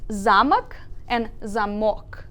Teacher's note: So as you can see, they are spelled the same way, but because the stress changes from a to o here, the word is completely different in meaning